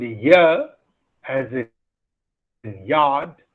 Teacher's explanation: The sound ya as in yard is a palatal sound because the front of the tongue is the active articulator and the hard palate is the passive articulator.